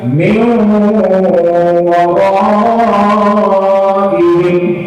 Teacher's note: Tapi kata idgham, kalau kami tidak mau mim, waw, tapi hilangkan bunyi nun itu jadi bunyi waw. Dan harus didengungkan